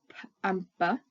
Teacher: these are made with our lips coming together right at the front of our mouths